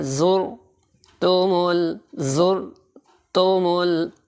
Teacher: حتی زرتمل، یہ حلق کے درمیان سے نکلے گا، اور تا کا وہ باریک بھی پڑھنا ہے، کھڑی زبر کی وجہ سے تھوڑا سا کھینچ کر پڑھنا ہے۔ حتی زر، زا کو سیٹی والا حرف ہے، اس کو زور دے کے پڑھنا ہے، را کو موٹا کرنا ہے